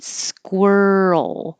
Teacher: this is the rl combination that you you keep your voice going from your r position to the l position squirrel it's the roll that gets very difficult sometimes squirrel and